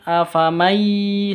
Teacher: nun sukun bertemu dengan ya, idgham bi gunnah, dengung masuk didengungkan, masuk ke ya didengungkan, afamai seperti itu, masuk ke ya.